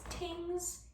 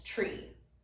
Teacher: Similarly, the TH might become a T. So things becomes tings, or three becomes tree. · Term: TH stopping